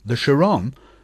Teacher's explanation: he pronounced it with the stress on the last syllable